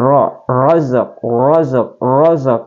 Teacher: ro dibaca tebal ra sebab berharakat fathah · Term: tafkhim